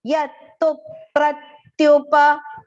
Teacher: First is ya, and then there is two ths joined together there with a small u vowel sound, and there is aghat on tu because the next word begins with pra, which is joint alphabets, pa and ra.